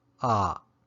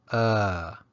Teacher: when you recite the alphabet it's pronounced ah but when used as a particle the pronunciation changes to uh